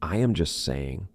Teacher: we drop that T. We do not pronounce it. So just sounds like just, right? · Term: silent T